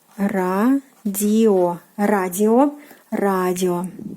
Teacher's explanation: The stress on the first syllable.